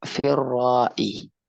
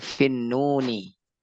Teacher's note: Lam syamsiyah mudghamah yang dimasukkan, yang dileburkan. Lamnya dileburkan.